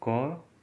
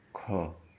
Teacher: क में कम हवा निकल रही है, कम वायु का संचार है, इसलिए क अल्प प्राण है। ख में ज़्यादा हवा निकल रही है, इसलिए ये महाप्राण है।